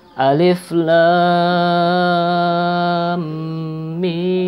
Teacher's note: Mim jumlahnya 6 harokat, lam jumlahnya 6 harokat.